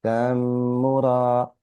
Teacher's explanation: the letter meme with mushadda must be read with ghunna. Slight nasal sound, slight hold.